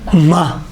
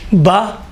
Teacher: ہونٹ کے خشک حصے سے میم ادا ہوتا ہے، ہونٹ کے تر حصے سے با ادا ہوتا ہے